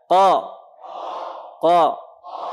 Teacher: ini pangkal lidah paling belakang. Ketemu langit-langit atas bagian lunak. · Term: Qaf